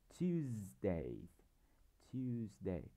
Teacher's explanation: Tuesday có hai âm tiết, chúng ta đọc Tues cao hơn, thì chúng ta sẽ đặt dấu phẩy trước Tues. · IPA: /ˈtjuːzdeɪ/